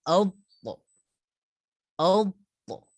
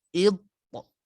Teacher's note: Untuk huruf to dia ada qalqalah dia tuan-tuan dan puan-puan. Jadi kita kena qalqalah, lantunkan suara.